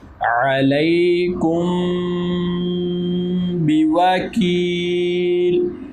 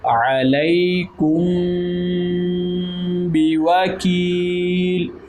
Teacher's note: میم ساکن ہے اور حرف با آ گیا ہے تو یہاں پر ہم اخفاء شفوی کریں گے